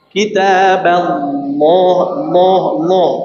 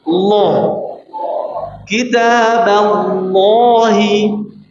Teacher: Bnya langsung masuk ke lam dengan suara lam yang tebal.